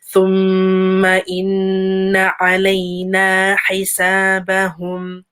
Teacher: a meme again with a shadda, and then a noon with a shadda. So please give it time, give it ghunna.